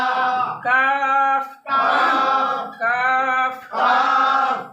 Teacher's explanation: জিহ্বার গোড়া থেকে একটু আগে বাড়িয়ে, তার বরাবর উপরে তালুর সঙ্গে লাগিয়ে মধ্যখান পেছানো কাফ